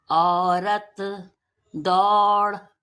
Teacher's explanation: इसको बोलने के लिए लंबा और भारी औ निकालते हैं।